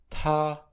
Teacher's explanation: The T sound is pronounced as in English, with a little explosion of air.